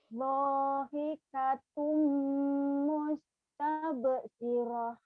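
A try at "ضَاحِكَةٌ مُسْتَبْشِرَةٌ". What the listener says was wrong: Dahikatum mustabshirah. Shinnya gede di ujungnya ya.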